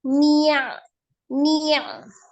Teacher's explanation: Jangan ada penekanan di huruf nunnya. Nunnya memang ngalir ya. Nunnya itu sifatnya dia rogoh.